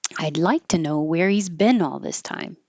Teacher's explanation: we can get rid of the H because the pronouns he, him, his, her, you can get rid of it and then you can connect the vowel, the consonant before it